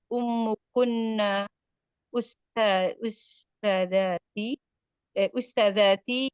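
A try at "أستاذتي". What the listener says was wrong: Bukan. Ustadzati, bukan ustadzati. Jangan kalau ditekan di taknya ti, ini jadi pertanyaan nanti.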